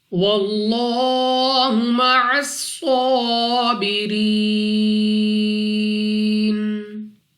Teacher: یہاں پر لام آف اللہ اور لام آف اللہ سے پہلے حرف پر زبر، تو اس لام آف اللہ کو پر یعنی موٹا پڑھیں گے